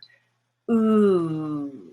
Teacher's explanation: and notice how i'm rounding my lips when i say that if you get your tongue further back still high you get the blue